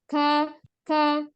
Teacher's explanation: pangkal lidah yang bertemu dengan langit-langit atas tapi agak ke depan. Kalau qaf tadi ke belakang ya. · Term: huruf kaf